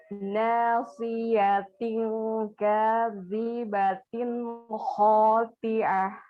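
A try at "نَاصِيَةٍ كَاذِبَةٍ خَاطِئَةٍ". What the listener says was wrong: Naam, hakadha. Insyaallah.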